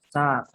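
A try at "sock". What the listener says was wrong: Sack. Nggak usah panjang. Sok.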